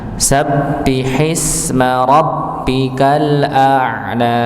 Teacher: kita dapati ada huruf ba dengan tasydid pada kata sabbihi dan rabbika, maka dihentakan